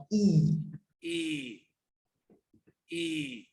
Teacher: a close front vowel is at the front of the mouth and high up